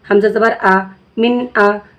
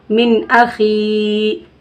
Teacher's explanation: अब देखिए यहाँ पे नून की आवाज़ को हमें ज़ाहिर करके पढ़ना है बिला गुन्ना, यानी नून की आवाज़ को ज़ाहिर करके जल्दी पढ़ना है बिला गुन्ना, यानी नाक में आवाज़ को रोकना नहीं है, जल्दी पढ़ना है और नून को ज़ाहिर करके भी पढ़ना है।